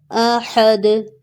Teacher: last word میں دال تنوین کے ساتھ ہے لیکن سٹاپ سائن کی وجہ سے یہ ساکن ہو جائے گی تو یہاں پر قلقلہ ہوگا